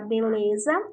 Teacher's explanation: o lé é pronunciado com mais força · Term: sílaba tônica